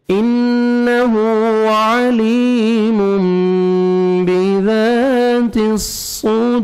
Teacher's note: را سے پہلے واو ساکن اور اس سے پہلے پیش ہے, آپ نے را کو پر کرنا ہے جب سٹاپ کریں گے